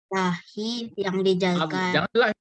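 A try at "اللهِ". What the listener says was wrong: Jangan lahi. Allahi itu.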